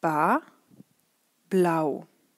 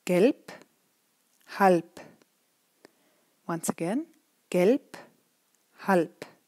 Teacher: At the beginning of the word, it's a real B. At the end, however, it's a P. P. It means that this consonant ends very hard at the end of a word.